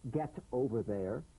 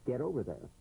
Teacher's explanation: the final T, when it's followed by a word beginning with a vowel, again, it becomes, in effect, a medial T. There's a vowel on both sides of it, so it gets softened to a D.